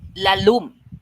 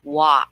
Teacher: it seems like the L sound in the middle of the word disappears when you're in Cebu.